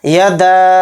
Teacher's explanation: یدا، دال کے ساتھ الف ہے، یعنی دال کے اوپر مد ہے، یہ مد منفصل ہے، تو اس دال الف زبر دا کے ساتھ یہ مد لگا کر ہم کھینچیں گے دال کو۔ یدا، 3 الف کی مقدار اس کو کھینچیں گے